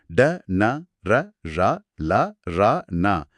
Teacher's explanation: இந்த ஒலிகளை உச்சரிக்க நாக்க பின்னால் மடிச்சு உச்சரிக்கணும்